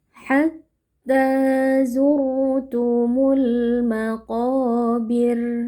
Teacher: Lalu karena kita waqaf dia itu menjadi sukun. Nah, ro sukun yang sebelumnya kasrah hukumnya adalah tarqiq atau tipis. Jadi, kita membaca dengan lidah yang datar ah tanpa perlu ditebalkan.